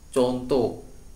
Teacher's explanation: orang Jawa saat menyebutkan kata contoh, ada unsur yang hilang, yaitu huruf H. Harusnya contoh menjadi contoh. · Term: menghilangkan unsur fonem